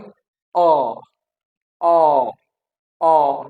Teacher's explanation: आपकी जो टंग है that is levered and your mouth is open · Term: ओपन साउंड